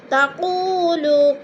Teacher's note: وہ مدہ کو ہم نے 1 الف 2 حرکات کے برابر کھینچ کر پڑھنا ہے